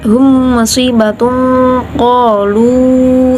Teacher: karena bacaannya ikhfa bacaan dengung ada gunah juga